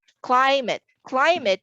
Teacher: climate is stressed on the first syllable